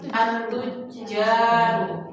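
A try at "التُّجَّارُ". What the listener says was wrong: Jimnya panjang ya, bertasdid at-tujaru.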